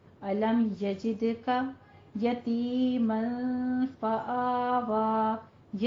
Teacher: أَلَمْ يَجِدْكَ، علم میں میم ساکن کے بعد حروف اظہار میں سے آ رہے ہیں جو کہ 26 ہیں، تو یہاں پہ ہم میم ساکن کا اظہار کریں گے. یجد میں دال کے اوپر قلقلہ کریں گے. علم یجدک یتیما فآوی، یتیم میں یا مدہ آ رہی ہے، مل میں اخفا کریں گے، تنوین ہے، تنوین کے بعد حروف اخفا میں سے فا آ رہا ہے.